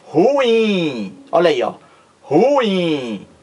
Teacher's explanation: oxítona porque o acento Tônico e não o gráfico o acetotônico a sílaba mais forte recai aqui na última sílaba o acento mais forte o acento tónico ruim olha aí ó